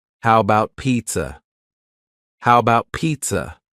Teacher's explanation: The first A in the word about is gone. It's just missing. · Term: reduced